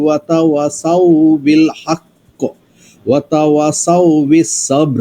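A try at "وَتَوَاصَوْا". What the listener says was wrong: ওয়াতা ওয়াতে টান আছে।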